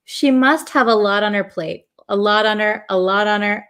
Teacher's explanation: this T in lot becomes a flap T so it almost sounds like a d